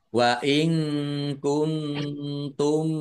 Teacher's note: kuntum ikhfa ya nun sukun bertemu dengan huruf kaf bacaan ikhfa nun sukun bertemu dengan huruf ta juga ikhfa dibaca samar-samar